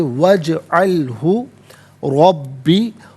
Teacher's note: रॉ पर ज़बर, रॉ को पुर करके पढ़ेंगे, बा मुशद्दद, बा को जमाओं के साथ पढ़ा जाएगा